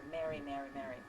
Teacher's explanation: in some American accents, Mary, Merry, and marry are the same